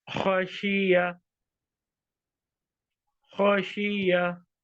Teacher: here ya has appeared as a consonant and not as a long vowel, because it has its own short vowel on its head.